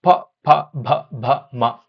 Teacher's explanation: ಓಷ್ಯ in the sense ತುಟಿ ತುಟಿಯ ಮೂಲಕವಾಗಿ ಹುಟ್ಟತಕ್ಕಂತ ಅಕ್ಷರಗಳು ಯಾಕೆ ಇಲ್ನೋಡಿ ಪ ಭ ಎರಡೂ ತುಟಿಗಳು ಸೇರಿದಾಗ ಮಾತ್ರ ಅಲ್ಲಿ ಅಕ್ಷರಗಳು ಉತ್ಪತ್ತಿ · ಎರಡೂ ತುಟಿಗಳು ಸೇರಿದಾಗ ಮಾತ್ರ ಅಲ್ಲಿ ಅಕ್ಷರಗಳು ಉತ್ಪತ್ತಿ ಆಗ್ತಾ ಇದೆ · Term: ಓಷ್ಠ್ಯ